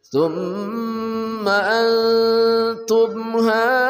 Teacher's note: Antum haulai itu 4 harakat. Mad jaiz munfasil dan mad wajib muttasil.